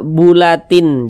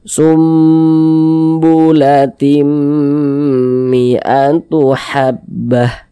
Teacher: tapi tim masuk ke huruf mim melebur ke huruf mim kemudian kita dengungkan kita gunahkan jadi suaranya itu kita tahan kita panjangkan sejenak